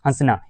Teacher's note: हंसना जब आप बोलोगे तो आपका जो उच्चारण स्थान होगा वो मुख और नासिक दोनों होंगे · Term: अनुनासिक